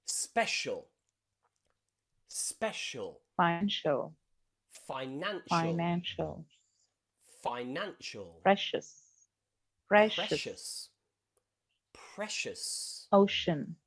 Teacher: c followed by many vowels is pronounced as a sh sound